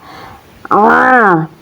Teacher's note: huruf ain ini keluarnya dari pertengahan tenggorokan ya atau yang disebut wasatol haq